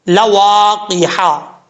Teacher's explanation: واو کو پڑھتے وقت ہونٹ گول کریں گے، جب تک ہونٹ گول نہیں ہوں گے اس وقت تک واو ادا اپنے مخرج سے نہیں ہوگی